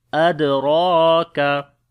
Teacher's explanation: On the dal we make qalqala, it is the weak qalqala. Ra we read in heavy sound and also we long. Kaf we read in light sound.